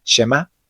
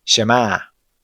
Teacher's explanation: la letra Ain actúa como una parada glotal, es decir, como un ligero corte de aire al final de la palabra